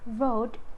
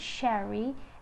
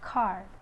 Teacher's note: R is voiced alveolar semi-vowel.